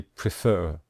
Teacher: we stress the final syllable